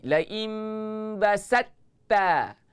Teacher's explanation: Kalau huruf ta tu ada sabdu, huruf ta tu hilang terus.